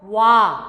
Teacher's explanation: 와와 워 같은 경우에는 모두 우 모음에서 시작합니다.